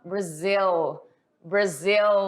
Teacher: utilizando o dark L, né? Esse L mais evidente. Faz aquele joguinho com a língua, joga ela lá em cima, porque você está falando inglês, então vai falar de forma diferente.